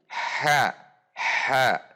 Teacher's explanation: posisi lidah dengan langit-langit terbuka sehingga dari al-istifal dan al-infitah ini huruf menjadi huruf yang tipis tidak menggelembung